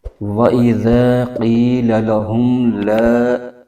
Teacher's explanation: میم ساکن کے بعد آگے لام حرف آ رہا ہے، تو یہاں پر اظہار شفوی کا قاعدہ ہے، تو یہاں پر بغیر غنہ کے پڑھیں گے